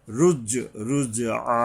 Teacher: রব্বিকার রুজআ, এই যে জিম উচ্চারণে সাবধান হতে হবে, এবং জুমের একদিকে কলকলা আর একদিকে এই যে জিব্বার মাঝখান থেকে তালুর সাথে গিয়ে মিশবে, মোটাভাবে শক্তভাবে আদায় হবে। রুজ, রুজ আ, এই আইন গলা চেপে আবার এক আলিফ টানতে হবে এখানে।